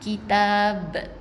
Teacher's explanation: Jadi jangan mati dengan kitab saja Dia ada qalqalah yang bunyi lantunannya sedikit kuat bukan kitab. Ada lantunan yang kuat sikit suara dia okey, qalqalah kubra.